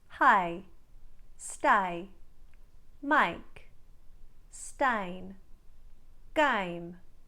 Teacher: the a diphthong taking on more of an i quality